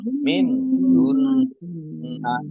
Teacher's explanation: Min hunna nun sukun bertemu dengan huruf ha izhar dibaca jelas. Nun tasdid dibaca mendengung ditahan 2 harokat.